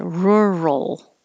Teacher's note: keep your voicing on and hold it in the l position a little longer and make the l noise so it can be heard